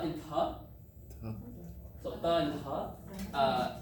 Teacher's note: It's a dental T. So tongue goes to the same place as when you say like a th in English